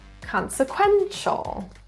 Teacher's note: stress is in the third syllable